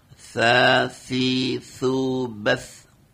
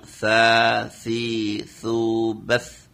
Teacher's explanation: Jadi pengucapannya semuanya sama. Artinya dari ujung lidah bertemu dengan ujung gigi seri